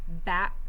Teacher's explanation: Remember, our tongue tip stays down. The back of our tongue is up. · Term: coughing sound